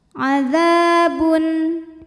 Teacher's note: karena tanwin dhammah menghadapi huruf hamzah. Maka tanwin dibaca n jelas. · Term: idhar halqi